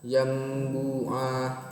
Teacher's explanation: Di situ ada nun tapi dibacanya mim. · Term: iklab